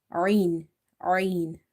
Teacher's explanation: Ain is from the middle of the throat.